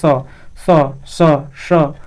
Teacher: दंत वर्ण स बोलोगे तो नीचे वाली जीभ टकराएगी दांत।